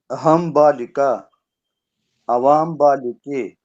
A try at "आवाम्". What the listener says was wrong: आवाम नहीं, आवाम, आ दीर्घ है। आवाम